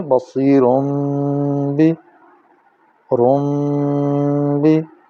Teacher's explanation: نون نے تنوین جو ہے اس کی آواز میم میں منقلب ہو جائے گی، بدل جائے گی، اسی کو اقلاب کہتے ہیں، لہٰذا یہاں نون نہیں میم پڑھی جائے گی۔